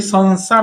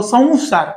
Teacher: थोडासा वचा उच्चार येतो याच्यामध्ये